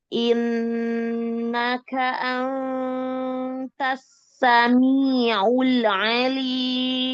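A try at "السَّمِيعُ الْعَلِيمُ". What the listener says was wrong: Sami'ul, jangan tawalud, jangan mantul lamnya.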